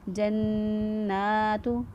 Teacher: نون کھڑی زبر نا جو ہے اس کو 1 الف کے برابر لمبا کرتے ہوئے پڑھیں گے